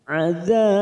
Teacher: maka kita panjangkan 4 harokat, lalu ujungnya kita pantulkan